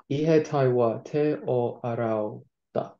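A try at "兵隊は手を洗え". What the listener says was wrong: So it's not E. What sound is it? Do you know how to put arau into imperative form, which is like you better wash? So, ro is imperative form for do verbs.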